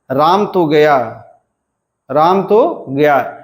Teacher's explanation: अस्वतंत्र वाक्य के उच्चारण में लगभग समान सुर आता है, जिसका अनुतान साँचा 1-1 होता है। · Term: अधूरे वाक्य का अनुतान साँचा